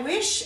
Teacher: If you say wish and put your hand over your mouth, you'll notice there's no air after the W, so there's no H after the W